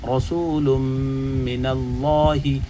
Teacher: اللہ کا لام پر ہو رہا ہے چونکہ اللہ کے لام سے پہلے حرف کے اوپر نون کے اوپر زبر ہے